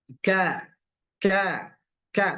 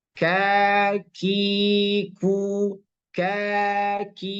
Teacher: Ka ada benturan. Pangkal lidahnya ada benturan dengan gusi yang keras. Dengan langit-langit yang keras.